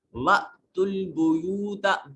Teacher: وَأْتُوا الْبُيُوتَ با میں حمزہ جو ہے یہ جھٹکے سے ادا ہوگا، حمزہ ساکن ہے